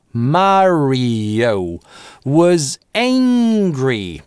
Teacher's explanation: потому что /iː/ + /oʊ/ связываются через linking [j]